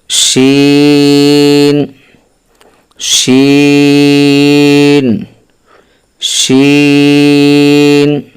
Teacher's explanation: জিহ্বার মধ্যখান তার বরাবর উপরের তালুর সঙ্গে লাগাইয়া জিম শিন ইয়া